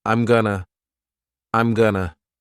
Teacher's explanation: of this lesson we have a contraction I am and then we're reducing going to to become Gunna